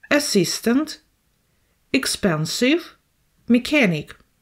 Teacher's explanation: the second syllable is under the stress